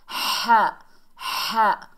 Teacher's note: بڑی ہا ہے، حلق کے درمیان سے ادا کریں گے